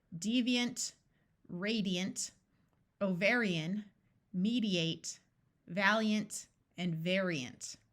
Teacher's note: Aven means bird zodiac a r says R cardiac a ant at the end of a longer word usually schwas and sounds more like UNT or int